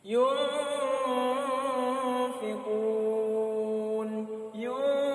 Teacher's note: bunyi nunnya itu samar-samar, ya. Samar-samar saja. Jangan dijelaskan, ya. Jangan dibaca jelas dan jangan dihilangkan bunyi nunnya, ya. Dibaca samar-samar antara ada dan tiada. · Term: ikhfa hakiki